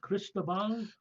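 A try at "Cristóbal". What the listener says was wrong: Cristobal, roll your R. You're Italian. You should be able to roll your R's.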